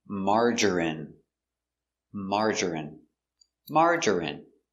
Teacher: margarine margarine margarine three syllables stress on the first syllable